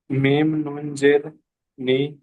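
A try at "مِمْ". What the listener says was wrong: মিম নুন নয়, মিম মিম জের। এখানে নুন সাকিনের পরে বা এসেছে, এটা ইকলাবের কায়দা, সেই জন্য এখানে নুন সাকিনকে মিমের দ্বারাই পরিবর্তন করে একালিপ পরিমাণ গণনা করে পড়তে হয়, সেই জন্য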